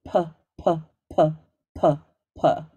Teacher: And feel that pop of air, that's a plosive sound that has a pop of air with it.